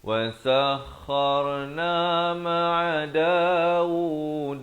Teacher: wasakhar kha di hujung kerongkong.